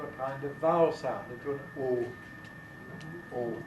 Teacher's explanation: And what happens is that dark L, in those positions where L is dark, is turning into a kind of vowel sound, into an O. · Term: L vocalization